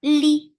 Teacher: for kasra, give e sound, and the sound is short